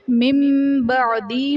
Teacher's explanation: من بعدی میں نون ساکن کے بعد حرف با آ رہا ہے تو یہاں پر نون ساکن کو میم سے بدل کر اخفا کریں گے، یعنی غنہ کر کے پڑھیں گے تو یہاں پر اقلاب کا قاعدہ ہوگا۔